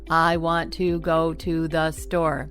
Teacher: Do you hear how every word is stressed exactly the same? They all carry the same weight. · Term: robotic version